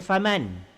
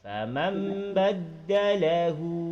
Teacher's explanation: Bila iklab kena tukar kepada bunyi Mim. mim mati. Famam baddalahu hu.